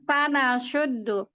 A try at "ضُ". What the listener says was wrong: nggak boleh tebal. tidak boleh naik pangkal lidah. dari tengah lidah. Itu tipis semua. Jadi ini tipis semua nih sebenarnya. harokatnya dhammah.